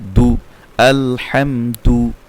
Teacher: পেশের উচ্চারণ ঠোঁট গোল হবে